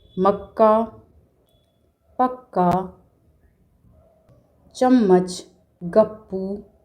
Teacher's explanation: जब दो समान व्यंजन आपस में मिलते हैं तो उन्हें द्वित्व व्यंजन कहा जाता है। द्वित्व व्यंजन में पहला व्यंजन स्वर रहित होता है और दूसरा व्यंजन स्वर सहित होता है।